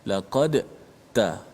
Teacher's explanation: Huruf da dengan ta ni makhraj yang sama. Hujung lidah berada di belakang gigi atas kita, kat gusi pengikat gigi. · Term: idgham mutajanisai